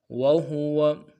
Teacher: یہاں پہ جو ہاں ہے وہو میں اس ہا کو انتہائی نرم سے ادا کرنا ہے، گہرائی سے نہیں ادا کرنا